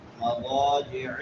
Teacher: الف مدہ ہے، اس کو لمبا کر کے پڑھیں گے ایک الف کے برابر